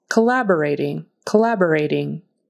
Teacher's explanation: The syllable stress is on the second syllable